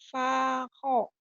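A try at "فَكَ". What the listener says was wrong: Fa, kedengarannya kayak sako ya. Padahal fa. Fa, Tadi kedengeran saya kayak sako. Mungkin mulutmu kurang membuka ya.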